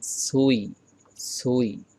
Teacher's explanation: বাংলার ছর মতো উচ্চারণ করলে হবে না ছুই, যদি এভাবে আপনি বলেন তাহলে হবে না, বলতে হবে এভাবে সুই সুই